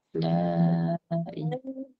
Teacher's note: Mat jaiz munfasil. La ilaha. 4 atau 5 harakat lah.